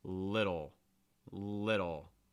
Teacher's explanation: a fast d sound where you don't need to make contact with the top of your mouth just need to raise and lower your your tongue very quickly